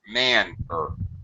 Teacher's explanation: first syllable is stressed man clearly a sound and higher pitch